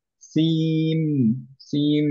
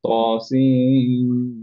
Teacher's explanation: নুন কমপ্লিটলি গায়েব হয়ে যাবে, আমরা মিম পড়বো এবং সেটা পড়বো হচ্ছে গুণনা সহ। সো আমরা পড়ছি কি খেয়াল করেন, ত সিন মিম না পড়ে আমরা পড়ছি হচ্ছে সিম, সিম, তারপরে মিমে গুণনা দিচ্ছি। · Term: ইদগাম